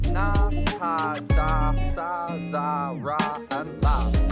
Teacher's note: Here the obstruction occurs at the alveolar ridge, that bony ridge just behind the upper teeth.